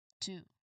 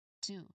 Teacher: correctly articulated when your um tongue tip precisely taps the ridge located just behind your top teeth. Okay, which of course as we've um already established it in our previous sessions, it causes a quick burst of air to be released to be released to two, right? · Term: T sound